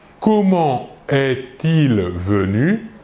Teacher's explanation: comment termine par la consonne T et le verbe commence par un E, mais nous ne réaliserons pas la liaison